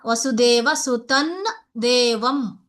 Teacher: अत्र तवर्गस्य अन्तिमवर्णः ता ता दा दा न इति भविष्यति खलु अत्र. सो अत्र अनुस्वार अनन्तरं दकार अस्ति चेत् अत्र नकार वक्तव्यम्, अनुनासिकवर्णं वक्तव्यम् अत्र.